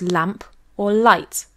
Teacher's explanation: it is articulated as an alveolar lateral approximant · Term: clear L